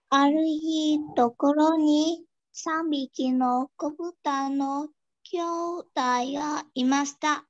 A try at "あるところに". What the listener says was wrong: Aru tokoro ni. Không phải Aru hi, đúng không? Ở bốn nơi nọ là Aru tokoro ni.